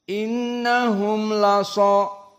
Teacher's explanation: mim as-sakinah bertemu dengan lam innahum lasa. Maka di sini idhar asy-syafawi.